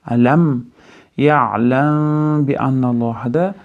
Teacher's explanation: Mim bga yo'liqanda ixfo shafaviy bo'ladi. Ya'ni lablarga yashiramiz.